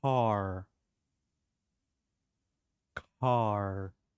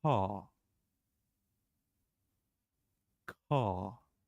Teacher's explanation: say a we also call it the dropped R once again the dropped r that means you do not pronounce that R